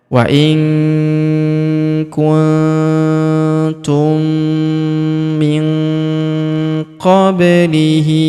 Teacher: Huruf hi kita panjangkan dua harakat karena alif kecil di bawahnya.